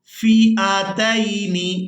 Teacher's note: حمزہ کو بغیر کھینچے اور بغیر جھٹکے کے ادا کریں گے